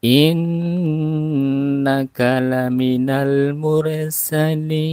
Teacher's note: Nun yang bertasjid atau sadah ditahan dipanjangkan